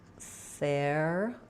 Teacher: We're going to flap that T. It'll sound like a light D. · So I will rewrite that with a Y and OO, pew. And then we have a little secondary stress on the ther syllable. So letters ER say the air sound.